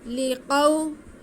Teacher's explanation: وَإِذْ قَالَ مُوسَىٰ، وَإِذْ قَالَ مُوسَىٰ لِقَوْمِهِ، لام کے نیچے زیر، قاف پہ زبر اور واو ساکن۔ واو ساکن سے پہلے زبر ہو تو واو لین ہوتی ہے، یہ بھی واو لین ہے، اس لیے ہم اسے کھینچیں گے بالکل بھی نہیں۔ لِقَوْ، آگے میم کے نیچے زیر ہے، ہا کے نیچے کھڑا زیر ہے، تو میم کو بالکل نہیں کھینچیں گے، لیکن ہا کے نیچے کھڑا زیر ہے جو کہ یا مدہ کے قائم مقام ہے، اس لیے ہم ہا کو کھینچ کے پڑھیں گے۔